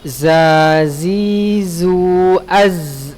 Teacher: kalau dia sukun dia maka dirokhawahkan, dia mengalir.